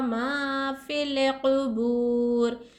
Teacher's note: یہاں دیکھیں واو ساکن سے پہلے حرکت پیش ہے، یہاں واو مد ہو رہا، بو کو ایک الف کی مقدار کھینچ کر پڑھیں گے